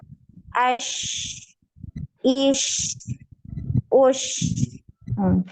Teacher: Ketika disukun ini ngalir ya suaranya.